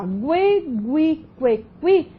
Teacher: Quando você pronuncia, olha lá, gue, gui, que, qui, você tem pronúncia do U, então você forma aqui um ditongo. Então, você tem aqui a pronúncia do U, que é uma semivogal, mais o E, né?